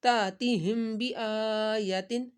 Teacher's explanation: تا کے اوپر ہم نے جھٹکا تھوڑا سا لگایا، کس وجہ سے کہ حمزہ ساکن ہے، جب بھی حمزہ ساکن ہو تو اس کو جھٹکے کے ساتھ پڑھا جاتا ہے۔